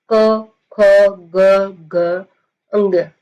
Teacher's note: तो ये साउंड आपकी कहां से निकल रही है? कंठ से निकल रही है।